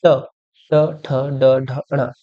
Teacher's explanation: तो ये मूर्धन हो जाएंगे आपके। ट की जो सीरीज है पूरी वही बेसिकली मूर्धन में चली जाती है